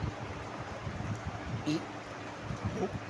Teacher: الف ہے جو منہ کے خالی حصے سے ادا ہوتا ہے۔ الف جب اس کی آواز، جب اس کی وائس ہم نکالیں گے تو آ کی آواز ہوگی، آ، ای، او، اور اسی طرح یہ کھینچنے میں کام آتا ہے۔